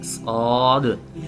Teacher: जुबान की नोक और ऊपर नीचे के दोनों दांत ये जब आपस में मिले तो इससे स्द अदा होता है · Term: सीटी वाले हरूफ